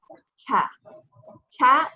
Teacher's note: Ta is close to the front of the mouth. It's closer to the English T. It is the English T.